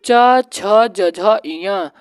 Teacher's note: यह तालू वर्ग में आता है